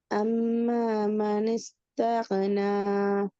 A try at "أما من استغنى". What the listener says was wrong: தகுன தகுன ராகம் எடுத்து தகுன. அது ஓதல் இல்லை. ஆம அபுகா அவ, அது ஓதல் இல்லை. அது வந்து ஜஸ்ட் ரீடிங்.